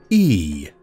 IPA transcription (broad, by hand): iː